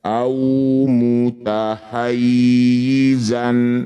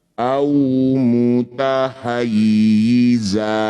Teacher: Ini disebut bacaan mad iwad. Bunyi fathah tanwinnya kita ganti jadi fathah panjang.